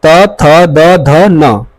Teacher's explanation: इसका उच्चारण स्थल दंत है। मतलब जो जीभ है हमारी जो दांत है उसके हल्का सा सट के तब उच्चारण निकलता है। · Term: दंत वर्ग